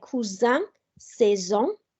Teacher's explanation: S in the middle will be a Z sound